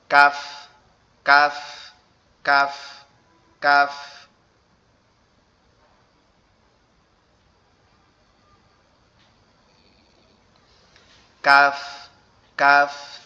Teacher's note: এরপরে কাফটা হচ্ছে আমাদের জিহ্বার গোড়া হতে একটু আগে আসবে, সামনে, একটু সামনে অগ্রসর হবে। কাফটা হচ্ছে আমাদের জিহ্বার গোড়া থেকে আরেকটু সামনে অগ্রসর হবে, হয়ে উচ্চারিত হবে কাফ।